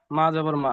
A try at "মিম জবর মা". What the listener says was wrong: মা জবর মা না, মিম জবর মা।